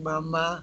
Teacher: bilabiales se unen los dos labios bilabiales Nadie puede decir mamá con los labios abiertos no la